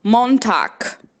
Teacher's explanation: esse G no final eu vou falar como se fosse um K